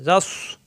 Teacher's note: জিম জবর যা জিব্বার মাঝখানে উপরে তালুতে যা মিলবে সদের সাথে জাস পরের ছদে জবর ছ ছা হবে